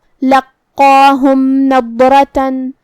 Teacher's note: آخری میں میم ساکن ہے، پھر حرف النون ہے کلمت نضرہ میں، نون حروف الابہار الشفوی میں سے ہے، تو ہم میم کو ظاہر کریں گے اور بغیر غنہ سے یہ حکم کو ادا کریں گے · کلمت لقاہم یہاں قاف کی تشدید کا دھیان رہے، 2 حرف کے برابر ہم قاف کو پڑھیں گے، جو کہ اس پہ کھڑا زبر ہے، تو ہمیں قاف کو اور یہ مد الف کو دونوں کو بھاری آواز میں ادا کرنا ہے